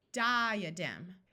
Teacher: Did you notice we don't say di-a-dem, but di-a-dem? The A schwas instead of having a short sound or a long sound.